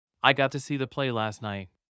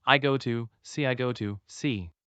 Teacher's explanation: we elide or omit the consonant at the end of the first word.